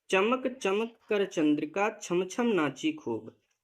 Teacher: चा और छ दोनों का जो उच्चारण स्थान है वह तालु होता है। इन्हें तालव्य वर्ण कहा जाता है, इनकी आवृत्ति हुई है।